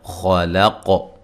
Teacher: ربک الذی، ذی یا مدہ ہے۔ خلق، خا کو موٹا، قاف کو موٹا ادا کرنا ہے، اور وقف کی صورت میں قاف پہ جو قلقلہ کرنا ہے خوب واضح کرنا ہے